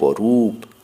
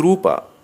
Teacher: রূপ হ্রস্ব উচ্চারিত কিন্তু রুপা দীর্ঘ উচ্চারিত